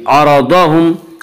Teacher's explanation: द्वाद को पुर पढ़ेंगे। द्वाद हुरूफ मुस्तालिया में से है।